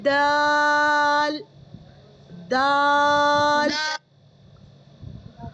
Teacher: जबान लग रही है ऊपर वाले दांतों के पास से।